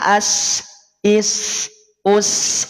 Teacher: Sin itu punya sifat yang namanya aliran nafas nafasnya dialirkan berarti kerasa ada aliran nafasnya ada desisnya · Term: hams